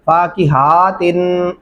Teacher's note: इस हा को लंबा किया जा रहा होता है